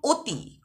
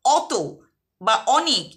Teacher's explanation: আবার কখনো কখনো একটাই বর্ণকে আমরা আলাদা আলাদা উচ্চারণ করি। যেমন অতি, কথাটিতে অ আছে প্রথমে, কিন্তু উচ্চারণ করছি ও এর মতো